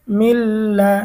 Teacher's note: ঈদগামে বেলা গুন্না, নুন সাকিন ও তানভিনের পরে ঈদগামে বেলা গুন্নার 2 হরফের কোনো হরফ আসিলে তখন ওই নুন সাকিন বা তানভিনকে গুন্নাহ ছাড়া মিলিয়ে পড়িতে হয়। এখানে নুন সাকিনের পরে ঈদগামে বেলাগুনের হরফ লাম এসেছে, গুন্না ছাড়া আমাদেরকে মিলিয়ে পড়তে হবে।